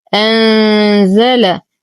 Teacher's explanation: نون ساكنة وبعدها حرف الزاي فالحكم إخفاء حقيقي مع غنة كاملة مرققة